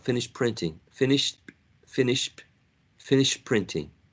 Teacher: The other option, it could be that the p is influencing the previous sound, which is t. So the t becomes more like a p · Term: assimilation